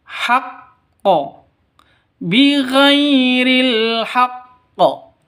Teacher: ini cara bacanya haqqo seperti itu jadi dipantulkan ke huruf qnya qofnya dipantulkan ke huruf qalqalahnya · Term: qolqalah Kubro